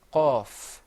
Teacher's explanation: the qaf is pronounced full-mouthed. You kind of purse your lips a little bit. You say qaf.